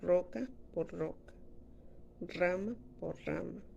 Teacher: Tiene un solo alófono R. Su articulación se origina por medio de dos o más oclusiones breves entre el ápice de la lengua y los alvéolos. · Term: Vibrantes múltiples